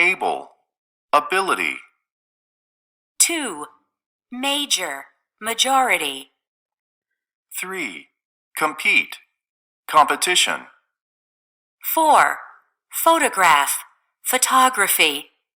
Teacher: notice how the word stress shifts over and notice how the stressed syllable in the root word becomes unstressed and is reduced